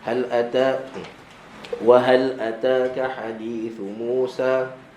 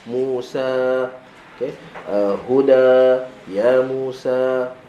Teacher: Dan yang keduanya ada bila kita nak berhenti waqaf pada surah-surah tertentu, surah Kahfi, Al-Kahfi ke surah Maryam, surah Taha, maka hujung dia berakhir dengan alif mad, dua harakat. Okey, maka bila kita waqaf, jangan waqaf macam hal ata wa hal ataka hadithu Musa.